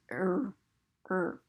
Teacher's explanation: the r takes most of the sound but it has a little bit of that vowel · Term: er sound